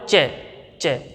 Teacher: च को बोलते समय हमारी जीभ के बीच वाला भाग है ना, तुरंत तालु को स्पर्श करता है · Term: तालव्य